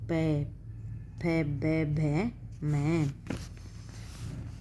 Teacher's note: इन व्यंजनों का उच्चारण करते समय दोनों होठ एक दूसरे से सट जाते हैं, मतलब आपस में मिल जाते हैं। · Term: ओष्ठ